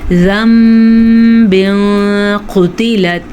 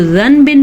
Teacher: اگر پچھلے حرف کے اوپر دو زبر ہوں یا دو زیر ہوں یا دو پیش ہوں، یا پچھلا حرف نون ساکن ہو اور اس سے آگے والا حرف با ہو، تو وہاں پہ چھوٹا سا میم پیدا ہو جاتا ہے، تو یہاں پہ بھی غنے کی کیفیت پیدا ہوتی ہے، تو نون نہیں پڑھا جائے گا، وہاں پہ میم پڑھا جائے گا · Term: اقلاب